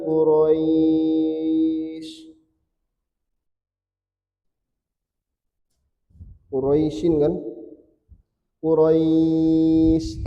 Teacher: ya sukun boleh dibaca 2 4 6 karena ada lin fathah ketemu ya sukun ketemu huruf yang disukun karena wakaf.